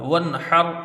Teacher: ہوگا، یعنی نون کو بغیر غنہ کیے جلدی پڑھا جائے گا، ہا کو را سے ملا کے جلدی پڑھا جائے گا اور پر پڑھا جائے گا